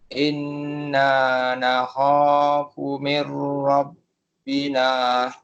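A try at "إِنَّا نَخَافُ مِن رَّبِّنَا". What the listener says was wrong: Dekat sini nun mati bertemu dengan huruf ra tadi tu idgham bila gunnah. Jadi bacaan dia ialah mir rabbina. Inna nakhafu min rabbina.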